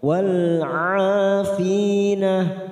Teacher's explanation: wal 'afina a fathah diikuti alif 2 harokat